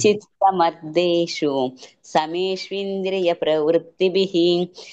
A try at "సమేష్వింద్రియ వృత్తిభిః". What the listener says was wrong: ప్రవృత్తి లేదు అక్కడ, వృత్తిభిః.